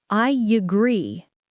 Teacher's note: The word agree begins with an sound. To connect these, we add a small y sound.